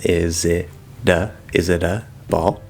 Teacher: The t there would flap, it becomes a flap d like normal.